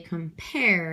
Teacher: I say compare and I stress the pair so unstressed followed by a stressed